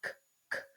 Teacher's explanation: you're going to feel the back of your tongue touch the roof of your mouth all the way at the back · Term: k sound